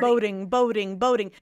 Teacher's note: Let's hear a good D here. A good flap D.